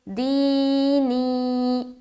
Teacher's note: یا ساکن سے پہلے زیر ہے، یا مدہ ہوگی، یا مدہ کو ایک الف کی مقدار کے بقدر کھینچ کر پڑھیں گے